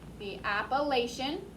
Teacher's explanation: Everything else is exactly how it's spelled, but that CH sounds like sh instead of ch. The Appalachian.